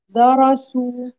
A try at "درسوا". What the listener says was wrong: لا تقولي الضاد، دا دارسوا، ترقيق الدال عند تفخيم الراء، دارسوا.